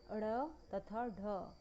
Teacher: उत्क्षेपित व्यंजन। उत्क्षेपित व्यंजनों के उच्चारण में जीभ पहले पीछे की ओर जाती है, फिर तेजी से आगे की ओर आ जाती है। उत्क्षेपित व्यंजन मात्र 2 हैं, ड़ तथा ढ।